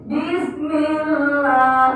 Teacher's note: Lafaz Allah berada setelah baris kasroh. Jadi bacanya tipis. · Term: tarkik